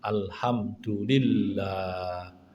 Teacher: tasdid di lillah nah itu alhamdu lillah itu ditahan